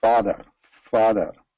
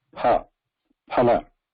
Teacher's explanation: the lips are very close and they're not completely closing. Father. But whereas in pa, lips are completely closing here.